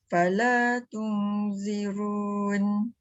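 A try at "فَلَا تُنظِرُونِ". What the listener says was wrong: Sikit lagi hujung lidah keluarkan. Fala tunzirun. Ada bunyi sofir. Wir. Tak keluar lidah tu. Dia tu yang dia berbunyi tu. Wir. Dia keluar hujung lidah tu menyebabkan kita punya sofir tu hilang. Kalau kita keluar lidah. Zazizu. Zazizu. Kalau tak keluar lidah dia akan bunyi zoziz.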